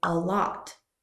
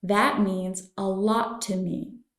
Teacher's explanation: remember to link the uh sound to lot so you say a lot